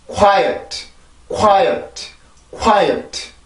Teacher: W는 양순, 전이, 유성음이었습니다. 양순이란 윗입술과 아랫입술을 이용해서 만들었었고 그리고 전이는 혼자서는 절대로 전이음이 될 수가 없고 항상 옆에 모음을 데리고 나왔었고요. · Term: W라고 하는 전이음